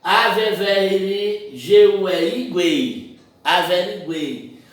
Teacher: Averiguei. Aqui nós temos o U, que é uma semi, o E vai ser uma vogal e o I vai ser uma semi. Veja que a vogal está entre duas semivogais.